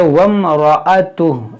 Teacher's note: ये हमजा वसली गिर जाएगा, इसे नहीं पढ़ेंगे, इसको पढ़ेंगे वम्रअतुह।